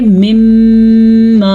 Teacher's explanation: ویسے یہ لکھا ہوا ہے من ما، لیکن ادغام کی وجہ سے اسے ہم پڑھیں گے مما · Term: ادغام بالغنہ